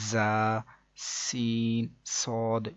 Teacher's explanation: ان 3 حروف یعنی کہ زا، سین، صاد کو ادا کرتے وقت سیٹی کی طرح کی آواز نکلتی ہے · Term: حروف صفیریہ